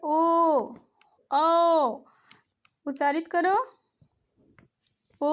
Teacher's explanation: कंठ से आवाज़ निकल रही है और ओष्ठ हमारा गोलाकार हो जा रहा है, तो इसलिए हम कह सकते हैं कि ओ और औ का उच्चारण स्थान कंठ और ओष्ठ होता है।